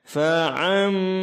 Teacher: Ini disebut dengan iqlab, yaitu suara fathatain terbalik menjadi suara m pada huruf ba. Fa'am ditahan dua harakat.